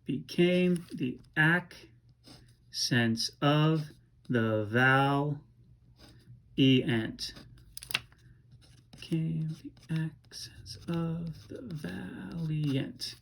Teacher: we can expand this IANT at the end of valiant to create a 10th syllable, and we will pronounce that valiant.